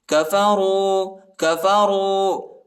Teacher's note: راو پیش رو، الف نہیں پڑھا جاتا، الف کے اوپر حرکت نہیں